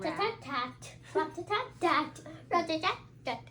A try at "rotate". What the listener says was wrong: No, it doesn't say rat. Do you see how you're adding an A there, but there's no A in the first syllable? What does R-O say? Not raw. Raw is an A sound. What does R-O say? Row. And what does that say? Rotate.